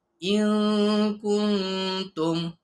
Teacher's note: Bunyi nun dibaca secara samar antara izhar dengan idgham serta dengung. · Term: ikhfa hakiki